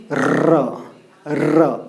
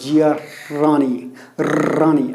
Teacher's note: आप देखिए जैसे कि र ऐसा, आप ल को नहीं बोल सकते, ल होगा ही नहीं, क्योंकि वाइब्रेट नहीं कर रहा है। तो ये वाइब्रेट करता है, यानी कि लुंठित यानी कि लुढ़क करके आता है। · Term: लुंठित व्यंजन